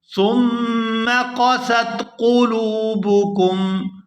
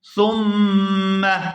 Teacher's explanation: سا کو میم مشدد کے ساتھ ملائیں گے تو غنہ کریں گے